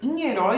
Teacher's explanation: herói nós temos o ditongo Oi em uma palavra que é oxítona né que tem como sílaba tônica sílaba mais forte a última